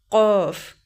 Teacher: یہ جو 2 نقطوں والا قاف ہے اس کو حلق سے ادا کریں گے